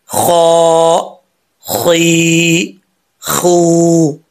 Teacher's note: خا حروف مستعلیہ میں سے ہے، پر پڑھا جائے گا یعنی موٹا پڑھا جائے گا، ٹھیک ہے، اور یہ منہ کا جو خالی حصہ ہوتا ہے نا وہاں سے ادا ہوتا ہے۔